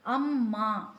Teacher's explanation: அ குறில் ஒரு மாத்திரை இம் அரை மாத்திரை மா நெடில் இரண்டு மாத்திரை இம் மெய்யெழுத்து அரை மாத்திரை அப்ப அம்மா என்ற சொல்லுக்கு மூன்றரை மாத்திரைகள் பெறும்.